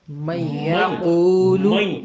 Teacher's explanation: مئی جب ہم کہتے ہیں تو کہیں ہلکا سا نون کا وجود آتا ہے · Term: ناقص